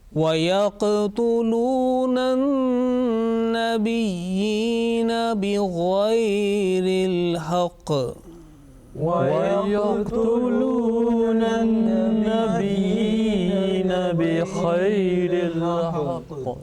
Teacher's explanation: Remember that on the second word yaqtuluna, you have to make soft jerking sound. Again, the noon gunna is coming in an-nabiyina, and then there is a heavy sound, strong jerking sound at the end.